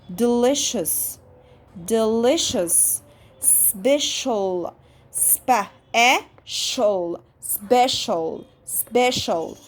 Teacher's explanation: صوت السي مع الاتش تش، سي اتش تش، والتي سي اتش تش. سي لما يجي وراه فاولز اكتر من فاول بيعمل ش ش. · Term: sh sound